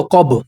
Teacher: من قبلکم، با کو جب قاف کے ساتھ ملائیں گے تو یہاں پر قلقلہ کریں گے، قلقلہ کہتے ہیں حرف کو ہلانا، آواز کا وائبریٹ ہونا۔ جب قاف کو با سے ملایا تو قب، آواز دوبارہ لوٹے گی۔